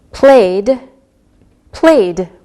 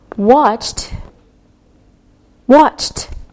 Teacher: we pronounce the E D sound like a soft D or a soft T